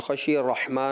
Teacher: हल्की हर्फ है, वस्त हल्क से अदा होता है